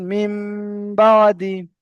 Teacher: নুন সাকিনের পরে বা এসেছে, তাই নুন সাকিনকে মিমের দ্বারা পরিবর্তন করে এক আলিফ পরিমাণ গুণনা করে পড়তে হবে।